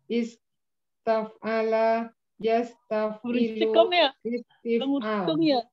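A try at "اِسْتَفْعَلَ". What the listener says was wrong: Ya, di itunya nadanya supaya la-nya jangan jadi panjang. Istaf'ala cukup satu ketukan, jangan istaf'ala, yastafilu. Nah, jadinya ketukannya kebanyakan jadinya.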